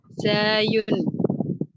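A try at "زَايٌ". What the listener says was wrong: fathahnya dibuka lagi. Za baru ke yun. Zayun. Ya, jangan agak miring dikit, tapi nggak miring. Buka lagi rahang belakang. Zayun.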